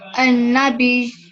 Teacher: النبي Not be ya, but you're going to pause on that ya, but also give it some stress because of the shadda. An-nabi.